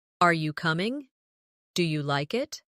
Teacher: In English, our voice usually rises at the end of a yes or no question. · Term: rising tone